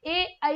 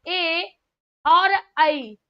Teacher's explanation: ए और ऐ जो दोनों बोले जाते हैं ये कंठ तालु से बोले जाते हैं। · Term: कंठ तालव्य